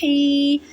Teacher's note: ہا یا زیر ہی، ہا کو حلق کے درمیان والے حصے سے ادا کریں